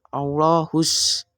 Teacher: Maka di sini teman-teman hukum bacaannya adalah alif lam syamsiyah sehingga huruf alif lamnya itu tidak perlu dibaca dan langsung masuk ke huruf shadnya